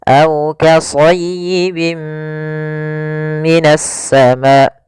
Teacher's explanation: Di sini ketika lafal bin ketemu dengan mim, ada hukum tajwid berupa idgham bi gunnah, yaitu ditandai dengan adanya tanwin bertemu dengan huruf mim. Cara membacanya, masukkan tanwin ke huruf mim dan ditahan gunnahnya.